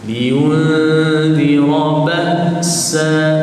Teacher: Apabila menyebut ba, suara terputus.